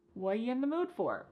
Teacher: The word are is gone. And the word you has been reduced to y. So when we link together what and you, it's super fast.